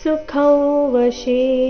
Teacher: ಸ ದೀರ್ಘ ಸನ್ಯಸ್ಯಾಸ್ತೆ ಸನ್ಯ ಮುಂದೆ ಸ್ಯಾಸ್ತೆ ಒಟ್ಟಿಗೆ ಹೇಳಿದಾಗ ಸನ್ಯಸ್ಯಾಸ್ತೆ ಸುಖಂ ವಶಿ ಸುಖಂ ಅನುಸ್ವಾರದ ಉಚ್ಚಾರಣೆ ನಾಸಿಕಾವ ರೀತಿ